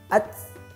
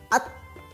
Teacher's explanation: Ta juga ada sifat yang mengalir nafasnya. Maka dikeluarkan nafasnya.